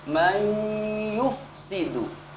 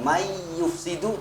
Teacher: Dengungannya harus terlihat nyata, tidak menggunakan lidah saja, bukan may yufsidu tapi ada sengaunya atau ada ghunnahnya. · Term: idgham bi ghunnah